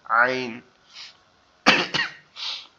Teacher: আইনটা হচ্ছে আমাদের কণ্ঠনালীর মধ্যখান থেকে উচ্চারিত হয়, যেটা গলা চেপে পড়তে হয় একটু চাপা আওয়াজে